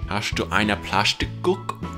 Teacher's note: In Swabian, ST and SP are pronounced like sh.